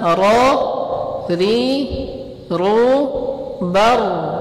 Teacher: Ro yang ada setelah ba itu tebal, baru.